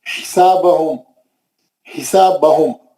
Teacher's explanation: हा जो है बीच हलक से पढ़ना है